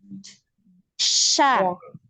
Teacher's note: Karena ada penyebaran udara, ada aliran juga dia suaranya.